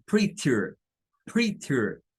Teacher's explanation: Los británicos sí dirían algo como prettier, prettier, con la T.